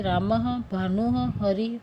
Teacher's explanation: स्वरों के आगे आने वाले 2 बिंदुओं को विसर्ग कहते हैं। विसर्ग का उच्चारण आधे ह की तरह किया जाता है।